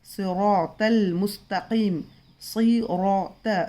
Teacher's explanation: सौ भी मोटा है और तौ भी हमने पढ़े मोटा है ना